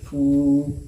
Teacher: बराबर फा वाव पेश फू, वाव मद्दा होगा इसलिए कि वाव साकिन से पहले फा के ऊपर पेश है, इसलिए वाव मद्दा को एक अलिफ के बराबर खींच करके अदा करेंगे